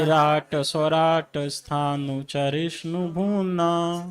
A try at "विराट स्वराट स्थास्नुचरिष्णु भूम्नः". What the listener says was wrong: स्थास्नु, स्थास्नु शब्द है, स्थानु नहीं। विराट स्वराट स्थास्नुचरिष्णु भूम्नः।